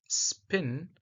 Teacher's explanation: in the word spin the p is unaspirated IE there is no burst of air and is represented as the simple P both of these are